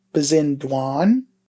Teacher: We'll get rid of that A sound at the end and add our suffix to produce bezindwan